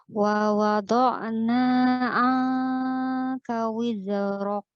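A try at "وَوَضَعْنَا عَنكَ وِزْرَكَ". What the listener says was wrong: Jangan wiz bukan. Za dia ngalir. Wa wada'na 'anka wizrak bukan wiz bukan wizrak.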